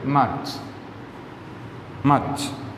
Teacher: ഒരു ട് സൗണ്ട് കൂടെ അവിടെ ചേർത്ത് വരുന്നുണ്ട്